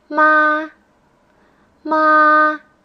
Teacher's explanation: straight line it's almost like you're saying you pronounce words that have this tone in a high steady voice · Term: flat tone